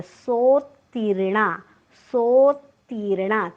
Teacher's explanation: तला त आहे, त्यामुळे सो नंतर तचा हलकासा उच्चार करायचा आहे